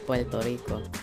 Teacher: Many in the Caribbean would actually pronounce R sounds closer to an L sound, such as places like Puerto Rico saying Puerto Rico instead of Puerto Rico.